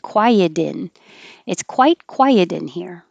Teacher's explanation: i could connect the t to the i and make it a d